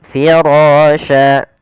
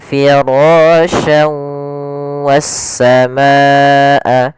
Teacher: pada lafal firasha dibaca tebal ra-nya karena dia ra yang berharakat fathah. Pada ra sendiri di sini ada hukum tajwid berupa mad tabi'i, yaitu kita panjangkan 2 harakat untuk ra-nya karena dia adanya fathah bertemu dengan alif. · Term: ra tafkhim